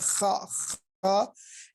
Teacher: دوسرا خائی، یہ حلق کے ابتدائی حصے سے ادا ہوتا ہے